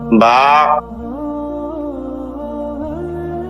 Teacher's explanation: স্বাভাবিক অবস্থায় মুখ যেমন ঠোঁট দুইটা মিলে থাকে, মিলানো ঠোঁট খুলে দিলে হয়ে যায়।